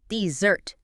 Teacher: Like, he deserted his team. Stress shifts to the second syllable